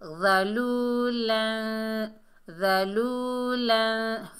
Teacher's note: یہاں پر اکفا ہوگا، یعنی آواز کو ناک میں لے کر جائیں گے